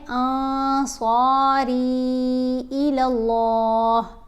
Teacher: نون کی آواز کو ناک میں چھپا کر پڑھا جائے گا، کیونکہ نون ساکن کے بعد صاد ہے اور صاد حروف اخفاء میں شامل ہے۔ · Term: احفا